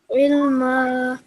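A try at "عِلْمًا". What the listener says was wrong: Rabbi zidni ilma. This ayn sound, try and make it a bit more prominent. Make sure that you say ilma.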